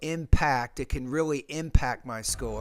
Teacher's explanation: You want to pronounce that with more air with the P.